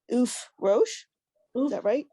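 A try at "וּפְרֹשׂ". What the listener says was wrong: Ufros. The last letter is a sin, a sin. Ufros, an S sound. why some of you are getting confused. The little dot above the resh, That's the vowel for the resh, and on the other side is the sin. So it's ufros.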